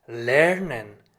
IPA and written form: ˈlɛʁnən (lernen)